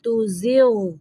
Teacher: غین کو قلقلہ نہیں کرنا